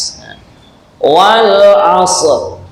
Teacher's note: Kemudian ujung lidah dipancatkan atau ditempelkan kedua gigi tersebut, ya, gigi di antara gigi atas dan gigi bawah. Kemudian sifatnya shad adalah isti'la yang berbeda dengan sin. Nah, maka tengahnya lidah, nah, ini diangkat ke atas